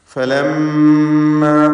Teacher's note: ഈ പദത്തിൽ മീം മുഷദ്ദദ, ഷദ് നൽകപ്പെട്ട മീമിനെ മണിക്കണം.